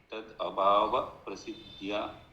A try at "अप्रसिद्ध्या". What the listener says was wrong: अप्रसिद्ध्या without splitting in between.